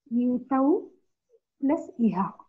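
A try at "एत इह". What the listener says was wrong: Please see again. Not yetau. If it is yetau, it will become av, right? Not yetau. If it is yetau, I'm saying yetau, av becomes av. But where is vakara here? Yeta iha is there. Therefore, it is not yete. Ete plus iha.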